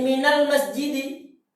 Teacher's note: Berapa saja antum dapatkan min ini harokat sukunnya dihilangkan. Sukunnya dia hilangkan diganti dengan fathah.